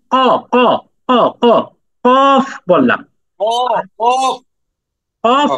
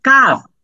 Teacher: করার সময় আমি কি বললাম কফ বললাম কফ কফ কফ বললাম মোটা হরফ উচ্চারণটা মোটা হইলো কফ আর পরের হরফটা উচ্চারণের সময় আমি বললাম কাফ একটু পাতলা